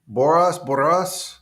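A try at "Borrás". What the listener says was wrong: Double R. It's a double R. It's like the double R. It's called the double R.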